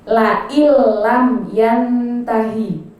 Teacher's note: Nah, di situ innya kan nun mati bertemu dengan lam. Dia memasukkan ke huruf la, ke huruf lam, tapi tidak dengung. Jadi bukan la illam, tidak, tapi la illam, masuk ke lam tapi tidak mendengung. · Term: idgham bila gunnah